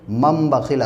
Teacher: नून साकिन या तनवीन के बाद बा आए तो नून साकिन या तनवीन को मीम से बदल कर गुन्ना और इख्फ़ा के साथ पढ़ेंगे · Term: इक़लाब